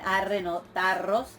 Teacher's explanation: Luego, un caso de asimilación, que es la vibrante, la ro en contacto con la sibilante, que da como resultado una geminada, o sea, doble ro, en donde lo que sucedió es que la ro toma el punto de articulación de la sibilante